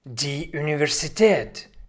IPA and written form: diː ˌunɪvɛʁziˈteːt (die Universität)